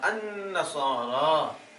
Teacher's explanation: النصارا، لام کے بعد نون شمسیہ، نون شمسیہ میں سے تھا، اس لام کو بھی نون کر دیا، لام کو بھی، تو پھر نون کا نون میں ادغام کیا